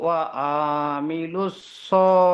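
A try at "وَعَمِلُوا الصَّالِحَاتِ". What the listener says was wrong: ওয়া টান হয়ে যাচ্ছে, আইনটা টান হয়ে যাচ্ছে। ওয়ামিলুস সালিহাতি।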